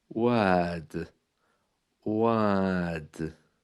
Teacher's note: the R is almost silent there completely